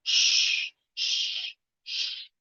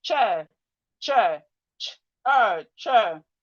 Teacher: CH says is SH is a bit longer. When you're pronouncing SH, you make it a bit longer. While for CH it's short and you just release R.